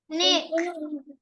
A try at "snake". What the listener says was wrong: I can hear only neck. I can't hear the spot. Not neck. It's snake. I can hear only neck.